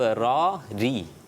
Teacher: پہلے والا را پر، بعد والی را باریک